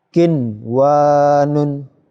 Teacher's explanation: Tidak kiwan, salah, ya. Dibaca jelas nun sukunnya. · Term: idhar wajib